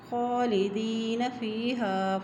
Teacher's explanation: خا کے اوپر کھڑی زبر ہے اس لیے اس کو ایک حرکت لمبا ادا کریں